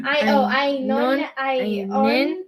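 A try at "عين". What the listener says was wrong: the N is part of the word. Un. N. Ainun.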